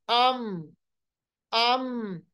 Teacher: मीम की आवाज जो है वो पस नहीं होती, मीम की आवाज कुव्वत के साथ अदा होती है और बुलंदी पाई जाती है आवाज में। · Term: सिफत जहर